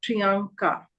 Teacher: But if you notice here, the first A is nasalized